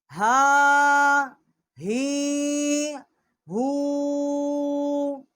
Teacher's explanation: ای، حمزہ الٹا پیش او، آ ای او، یہ ہا ہے، بڑی ہا ہے، اقصائی حلق سے اس کا مخرج ہے